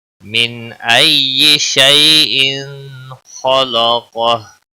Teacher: من ای تشدید والے حرف کو تھوڑا سختی کے ساتھ پڑھیں. شیء یا لین ہے تھوڑا نرمی کے ساتھ ادا کریں گے